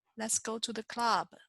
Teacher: club doesn't change going down it'll just be a lower pitch